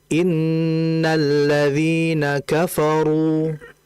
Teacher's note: Ro di situ dommah. Ro dommah itu merupakan ro yang dibaca tebal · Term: ra yang dibaca tebal